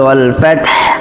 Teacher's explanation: সম্মানিত দর্শক, আমরা যদি এই আয়াতের সঙ্গে দ্বিতীয় আয়াত মিলিয়ে পড়ি তাহলে এখানে ওয়াল ফাতহু পড়বো, আর যদি ওয়াকফ করি তাহলে ওয়াল ফাতহ, হায়ের উপর ওয়াকফ করতে হবে, কিন্তু হাটা পরিপূর্ণ বোঝা যাইতেই হবে